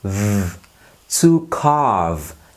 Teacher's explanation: Nhớ âm cuối nhé, răng trên chạm môi dưới. V. To carve, sắt mỏng.